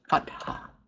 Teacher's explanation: You will not pronounce this as the TH sound in English. The T and the H are sounded separately. This word is pronounced pat-ha, pat-ha.